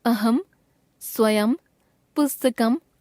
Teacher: शब्द के अंत में अनुस्वार का उच्चारण हमेशा म के रूप में ही होता है